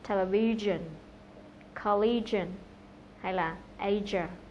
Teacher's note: đây là phụ âm kêu, voiced consonant, và âm này được tạo ra giữa phần mặt lưỡi trước và vỏ miệng, và là một âm sát. Khi mà các bạn phát âm thì các bạn sờ tay vào cổ của mình thì sẽ cảm nhận được độ rung của dây thanh âm.